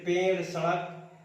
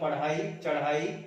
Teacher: अड़ा और ढा, ये जो व्यंजन है उत्क्षिप्त व्यंजन कहलाते हैं